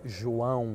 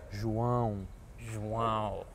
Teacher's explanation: On the top of the A, you had the tilde, so it makes it like a more nasal sound